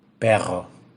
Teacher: Consiste en una serie de golpecitos que le damos con la lengua a la zona alveolar. Generalmente son tres. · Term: vibrante múltiple alveolar